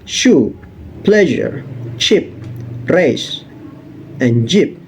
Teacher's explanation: post-alveolar, which is located right behind the alveolar region, or the middle of your upper mouth. This particular part of mouth is contributing the sounds of sh, zh, ch, r, and j.